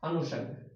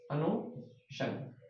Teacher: सीधा सीधा नियम ध्यान में रखना है कि ई और ऊ के साथ में जब भी ये स मिलेगा तो ये स क्या होगा? ये स बन जाएगा मूर्धन्य।